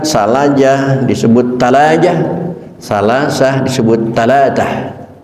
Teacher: orang Makkah Madinah nyebut Sa bukan berubah ke Sin tapi berubah ke ta